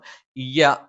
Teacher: യ നാവിന്റെ മധ്യഭാഗം മേലെ അണ്ണാക്കിലാണ്